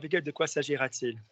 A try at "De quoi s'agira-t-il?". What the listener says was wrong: Careful to not go to je. It's de quoi s'agira. So sometimes an S is an S. It's not the Z. So your brain is partially making S's Z's. De quoi s'agira-t-il? That's an S.